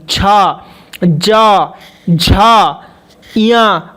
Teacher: च वर्ग के जितने भी है तालू से बोलते हैं देखिए च जीभ ऊपर टच होगी छ ज झा य आप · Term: तालव्य